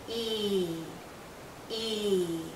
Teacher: our lips are very spread very pulled out and this is a long vow sound so think of your lips being pulled out like the vowel